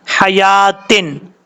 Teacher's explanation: یہ جو یا کے اوپر کھڑا زبر ہے ایک الف کی مقدار اس کو لمبا کر کے پڑھیں گے